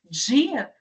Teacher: Então começa como oclusiva e termina como fricativa. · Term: africada